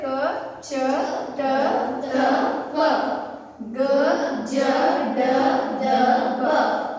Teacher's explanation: ಈ 10 ಅಕ್ಷರಗಳನ್ನ ನಾವು ಬಹಳ ಸರಳವಾಗಿ ಕಡಿಮೆ ಉಸಿರನ್ನ ಬಳಕೆ ಮಾಡಿಕೊಂಡು ಉಚ್ಚರಿಸಬಹುದು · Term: ಅಲ್ಪಪ್ರಾಣ